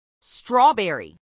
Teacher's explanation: acentuación en la primera sílaba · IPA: ˈstrɔˌbɛri